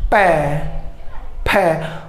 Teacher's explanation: जैसे मैं बोलूँ पै, फै, जो इस पै और फै का उच्चारण करते समय हमारे दोनों ओष्ठ हैं वो आपस में क्या हो रहे हैं? स्पर्श हो रहे हैं। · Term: स्पर्श वर्ण